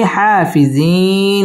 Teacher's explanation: মধ্যে আরজি তিন আলিফ টেনে পড়তে হবে